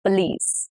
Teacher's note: The stress is on the last syllable, which is police.